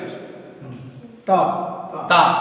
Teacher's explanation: जुबान की नोक, जुबान की नोक बोले तो पूरा लाल वाली नहीं, ये टिप ऊपर के दो दांतों की जड़ से लगाई